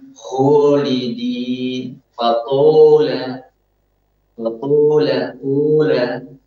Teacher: Dan dia tidak sempurna ketika membuka mulutnya, maka yang terjadi adalah dia mencampur suara alif itu dengan suara waw